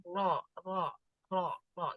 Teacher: Ro ini terletak di awal punggung ujung lidah bertemu dengan gusi dari 2 gigi seri atas. Ini gusinya 2 gigi seri atas. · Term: huruf ro